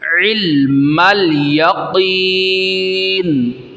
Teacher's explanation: عین واضح کرنا ہے، حمزہ نہیں ہے، عین کو نکال کے علم الیقین، قاف کو موٹا کرنا ہے، صحیح ہے؟